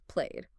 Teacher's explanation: a word like play ends in a vowel sound, which is voiced becomes played, with that D sound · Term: a voiced D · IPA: /d/